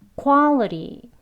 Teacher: 드 소리와 르 소리가 같이 합쳐진 소리로도 들리기도 합니다 · 디귿에 해당하는 발음이긴 해요. 근데 부드러운 드예요. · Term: flap T 발음, flap T